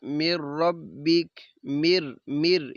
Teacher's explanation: مر مر، یہ ادغام ہو رہا ہے، غنہ نہیں ہے